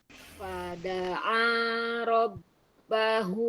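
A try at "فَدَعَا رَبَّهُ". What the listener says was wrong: Nah, kalau ini kurang tebal. Nah, kurang tebal.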